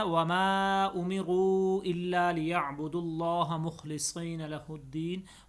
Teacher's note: وما کے اوپر مد ہے، امروا کے اوپر بھی مد ہے، 3 الف کے برابر اس مد کو لمبا کرنا ہے